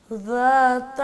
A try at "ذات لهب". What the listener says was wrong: ذات اس کو پھر ذا بنا دیا آپ نے دوبارہ بولیں